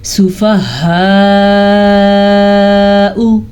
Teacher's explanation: ये वाली मद तकरीबन 4 से 5 सेकंड तक लंबी की जाने वाली मद है। वैसी इसकी मिकदार 5 हरकात अरबिया है।